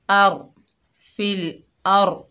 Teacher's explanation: फिल, हमज़ा के ऊपर ज़बर है, आगे रॉ साकिन है, हमज़ा को रॉ से मिलाकर पढ़ेंगे, रॉ पुर पड़ जाएगी